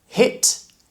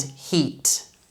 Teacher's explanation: you want to make a difference between short sound, I, and a long sound, E, and your mouth is going to be a lot wider with E compared to I.